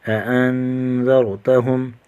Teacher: نون ساکن کا اخفا کریں گے، غنہ کر کے پڑھیں گے، اور میم ساکن کا اظہار ہوگا، غنہ نہیں کریں گے۔